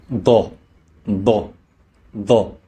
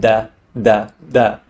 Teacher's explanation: Next is Dad, pronounced as a D coming from deep in the throat